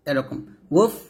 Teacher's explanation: বাতাস বের করবেন তবে কলকলা করবেন না